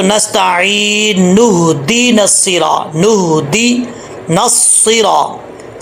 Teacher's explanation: بیچ میں جو حمزہ ہے اس کو گرا دیں گے